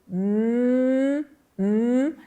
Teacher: podemos claramente perceber que há vibração das cordas vocais. Todas as nasais são segmentos vozeados.